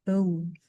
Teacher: O ini juga masuk di diphthongs ya. Bunyi vowels yang lebih dari satu bunyi. Ada e dan u.